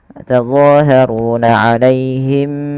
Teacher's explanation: tahan apa yang ditahan? Suara bunyi mimnya, karena di sini ada bacaan namanya ikhfa syafawi